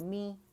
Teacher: یہ ساکن جو ہے یہ میم کی آواز کو 2 count کے لیے می کر کے کھینچے